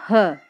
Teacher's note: ह जो है वो ऊष्म व्यंजन है, इसके साथ साथ संघर्षी भी है